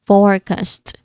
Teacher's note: You ensure that you pronounce the longer vowel in the first syllable.